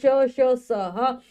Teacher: मतलब इन व्यंजनों का जब भी हम उच्चारण करेंगे मुख से निकलने वाली वायु रगड़ खाती हुई बाहर आती है, जिससे ऊष्मा एक गर्मी सी पैदा हो जाती है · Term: ऊष्म व्यंजन